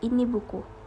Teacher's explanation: kesenyapan tengah terjadi antara ucapan kata dalam kalimat, misalnya antara ucapan kata ini dan buku